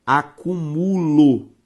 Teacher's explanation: a palavra acumulo, com a sílaba tônica em mu.